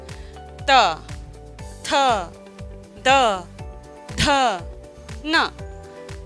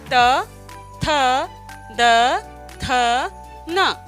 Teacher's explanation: हमारी जीभ ने दांतों को छुआ और फिर उसके बाद में ध्वनियां निकली, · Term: दंतव्य व्यंजन